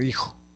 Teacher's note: La F inicial latina se dejó de pronunciar y fue sustituida por la H en la escritura.